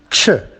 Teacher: So we can say that ch is voiceless, post-alveolar, and an affricate.